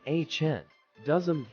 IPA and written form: ˈhɪn.du.ɪzəm (Hinduism)